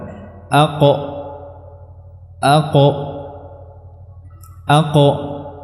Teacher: keluarnya adalah dari pangkal lidah ya bertemu dengan dinding lunak tenggorokan aqo aqo aqo Nam aqo cara mengeluarkannya dengan merapatkan keduanya antara · Karena makhrajnya ada setelah keduanya, setelah kedua huruf tadi. Maka huruf qaf keluarnya adalah dari pangkal lidah, ya, bertemu dengan dinding lunak tenggorokan.